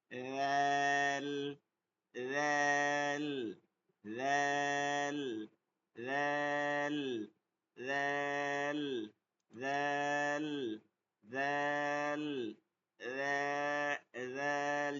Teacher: জিহ্বার আগা থেকে সামনের উপরে দুই দাঁতের আগার সঙ্গে নরম নরম করে উচ্চারণ করতে হয়।